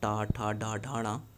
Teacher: यह टा वर्ग जो है वो मूर्धन्य है